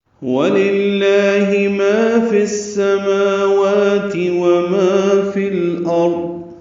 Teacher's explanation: فا کو السماوات کی سین سے ملا دیں گے، ادغام شمسی ہوگا، اس لیے الف لام نہیں پڑھیں گے. میم واو کو 2 حرکات لمبا کریں گے. · فی الارض لام ساکن یہاں پہ پڑھا جائے گا، یہ اظہار قمری ہے